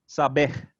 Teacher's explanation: the stress was on the final syllable there